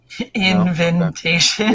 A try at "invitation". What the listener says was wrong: you put too many ends in it